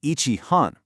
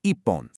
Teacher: hon starts with an H, which often transforms to a P sound in Japanese compounds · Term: strong double P sound